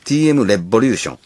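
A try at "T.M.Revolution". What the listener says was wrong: い や ▁TM ▁レ ボ リ ュ ー シ ョ ン や 。 発 音 が ▁TM ▁ネ ッ ト ワ ー ク と 混 ざ っ と ん ね ん 西 川 さ ん 朝 倉 さ ん が ▁TM ▁ネ ッ ト ワ ー ク が 入 っ た み た い に な っ て る か ら 。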